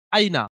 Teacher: ইয়াই লিনকে নরম আওয়াজে তাড়াতাড়ি পড়তে হয়, টান দেওয়া নিষেধ। নুনের উপরে জবর আছে, জবরটি হলো হারাকাত, হারাকাতের পর তাড়াতাড়ি পড়তে হবে, টান দেওয়া নিষেধ।